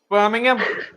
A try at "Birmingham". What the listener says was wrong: No, longer. Birmingham. And you got to push your lips out. Birmingham.